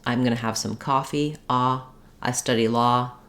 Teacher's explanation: Of course, there's many other details and dialects here, but this is just a stereotypical one, that the ah vowel, which is a monophthong for most of us. I'm going to have some coffee.